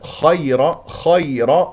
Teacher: الخاء مفتوحه مفخمه مرتبه ثانيه والياء ساكنه قبلها مفتوح اذا يا اولين لا تضغط على المخرج